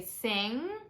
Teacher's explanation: hum with an NG position, like when you say sing and your tongue goes up in the back, you keep it up like that.